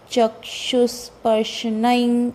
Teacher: अब ये क्ष के बाद जो विसर्ग है उसका उच्चारण स आएगा क्योंकि अंत में नहीं है, ह या हा नहीं आएगा, स क्योंकि अगला वर्ण स है।